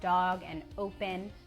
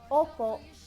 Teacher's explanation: In Tagalog, the O sound is more open and round inside of your mouth.